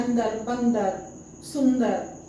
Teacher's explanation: जन्म होता है नाक से लेकिन मुह से उसका ध्वनि निकलेगा नाक से ध्वनि नहीं निकलेगा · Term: अनुस्वार